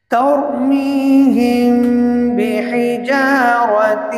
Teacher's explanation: یہاں میم ساکن کے بعد با ہے تو لہذا یہ اخفا شفوی ہے، یہاں غنہ ہوا